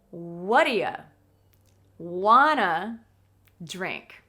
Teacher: We stress the question word what, and we stress the verbs a bit, want and drink. And everything else becomes smaller, faster, and it's more difficult to hear. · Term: connected speech